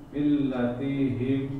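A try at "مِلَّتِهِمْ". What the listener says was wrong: Ti-nya nggak boleh panjang. Millatihim. Mungkin Bapak sebentar di huruf yang tasdid kurang lama dikit. Millatihim.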